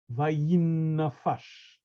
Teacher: The accent is on the last syllable.